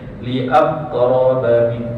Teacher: Qalqalah ni keluar lambat. Dia masuk dulu, kena baru keluar qalqalah.